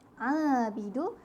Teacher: Abidu, mad asli, bidu, mad asli 2 harakat.